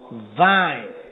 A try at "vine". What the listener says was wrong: You got to work on that V more. So you got fine, vine, fan, van.